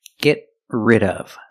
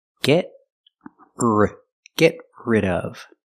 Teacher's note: We see the T in get is a stop T.